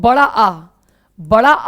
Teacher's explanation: बड़ा आ जो होता है उसमें मुंह पूरा खुलता है और इसको विवृत स्वर कहते हैं